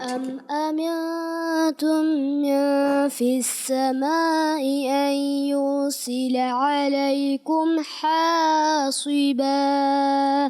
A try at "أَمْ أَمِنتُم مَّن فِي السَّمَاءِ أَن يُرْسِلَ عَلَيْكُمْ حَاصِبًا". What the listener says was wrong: فی السماء. بتائیے مد ہے, مد کو کیا کرنا ہوتا ہے؟ کھینچنا ہوتا ہے نا. تو مد کو کھینچیں گے تو آپ کھینچیے.